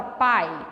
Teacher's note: o i acaba saindo um pouquinho mais fraco que o ar pai o a soa um pouco mais forte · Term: semivogal